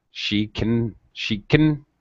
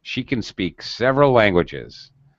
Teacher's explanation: when we use can to talk about our skills or abilities uh we generally reduce pronunciation uh to a schwa sound like uh she can she can notice how fast that is